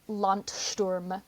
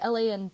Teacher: German at the end of root words will remove the voicing from certain consonants, so that's why this D sounds like a T. And I don't want to get too much into the phonetics, but knowing those concepts and how the anatomical system that produces speech works can help you understand things about spelling.